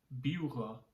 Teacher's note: So first we start with the P. Now a Yupik P is between the sound of an English P and an English B. But it's also a soft sound.